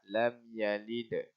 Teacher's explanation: jadi kena buat qalqalah, iaitu keluarkan lantunan suara yang melantung.